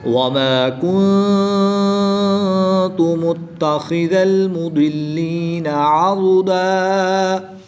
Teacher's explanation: دو زبر کی تنوین کو وقف کی حالت میں الف مدہ سے تبدیل کر کے پڑھتے ہیں · ضاد حروف مستعلیہ میں سے ہے جس کو پوری یعنی موٹا پڑھیں گے، اور دال کو باریک پڑھیں گے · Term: ضاد اور دال